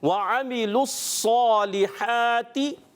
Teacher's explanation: تو لام کو ڈائریکٹ ہم صاد سے ملا دیں گے